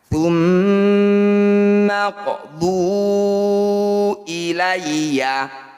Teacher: Qalqalah artinya memantul, sugro itu kecil. Jadi pantulan huruf qaf ini jangan berlebihan, cukup dialirkan saja. karena qalqalahnya berada di tengah bacaan atau di tengah ayat. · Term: qalqalah sugro